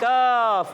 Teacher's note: और इस काफ को बारीक रखना होता है